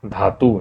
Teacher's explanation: कहां से बोलते हैं धा को? हम लोग दंत से बोलते हैं